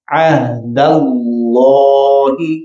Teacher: اللہ تعالیٰ کے نام مبارک سے پہلے حرف کے اوپر زبر ہے، لہذا حرف لام کو موٹا پڑھا جائے گا